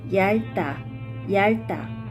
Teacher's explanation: 겹받침 리을, 비읍 is pronounced with the front sound 리을, such as 얇다, 얇다.